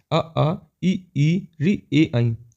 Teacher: इसमें देखो आपका मुंह जो होठ की बनावट है वो गोल नहीं है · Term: आवृतमुखी स्वर